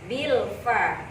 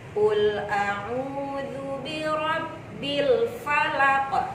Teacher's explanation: Karena setelah lam itu ada huruf fa. Maka lamnya itu harus dibaca jelas ya. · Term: alif lam qamariyah